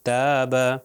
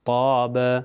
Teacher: تے جو ہے نارمل پڑھیں گے اور توئیں سے جو ہے موٹا ہو جائے گا